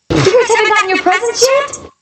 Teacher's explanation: this is a yes-no question, and her intonation is going up at the end.